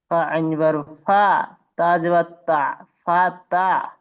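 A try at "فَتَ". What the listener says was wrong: আপনার কিন্তু উচ্চারণ অক্ষরের উচ্চারণ কিন্তু সহি হচ্ছে না তাকে আপনি আইনের সাথে তুলনা করছেন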